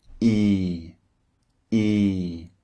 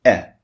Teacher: the first one is long and the second one is short so the first vowel e as in leave you can hear